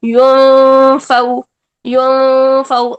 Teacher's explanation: اور فا کا اخفا کیسے ادا کیا ہم نے، کہ یا کی پیش کو ادا کرنے کے فوراً بعد فا کی ڈائریکشن سیٹ کی، دونوں ہونٹوں کو سیٹ کیا، یعنی نیچے والا ہونٹ اوپر والے دانت کے قریب کیا، پھر نون کی آواز کو 2 حرکات جتنا چھپایا، اور پھر فا کی حرکت ادا کر دی.